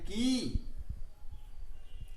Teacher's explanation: यहां पर क के साथ दीर्घ ईकार है, 2 मात्रा का समय लगता है